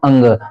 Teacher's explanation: नाक से भी हवा निकल रही हमारी नाक से भी बोला जा रहा है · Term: अनुस्वार